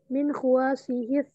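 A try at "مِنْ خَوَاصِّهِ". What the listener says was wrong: Kho-nya itu dibaca fathah. Min khawasihi, shadnya ditasydid.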